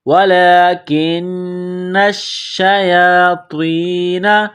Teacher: وَلَكِنَّ الشَّيَاطِينَ، نون کو شین کے ساتھ ملائیں گے، نون کے اوپر تشدید ہے، شین کے اوپر تشدید ہے، تو نون اور شین میں سختی کریں گے، دبائیں گے۔ · یا کے اوپر کڑا زبر ہے، ایک الف کے لمٹ میں کھینچنا ہے